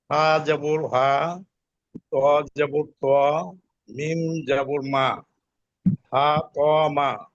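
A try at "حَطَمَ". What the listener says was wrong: এটা তো তাড়াতাড়ি করতে হবে। আপনি যখন হা ত মা, এটা এক আলিফ টানের এই জায়গা সময়, এটাকে দ্রুত বলতে হবে।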